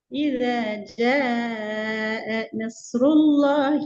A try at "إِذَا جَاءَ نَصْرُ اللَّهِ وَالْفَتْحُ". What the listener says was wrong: பிழை. நீங்க என்ன செய்றீங்க? ஜ நஸ்ருல்லாஹி அதுக்கு பின்னால் நிப்பாட்டுறீங்க, அது பிள்ளை. அங்கதான் நிப்பாட்டணும்.